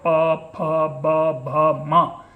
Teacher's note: दोनों ओष्ठ के मेल से भीतर से जब हम हवा छोड़ते हैं तो पवर्ग का उच्चारण होता है